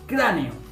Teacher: Son dos vocales abiertas. Por lo tanto es... genial. Un hiato